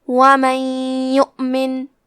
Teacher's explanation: ادغام کا معنی ہے حرف کو حرف میں داخل کرنا، تو ہم نون ساکن کو یا میں ملا کے غنہ اور تشدید کے ساتھ یہ حکم کو ادا کریں گے